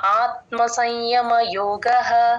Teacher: సంయమ ఇక్కడ య ముందు ఎప్పుడు సున్నా వచ్చినా సగం సగమే పలుకుతాం మనం అనుస్వరాన్ని సంయమ నాజిల్ సౌండ్ రావాలి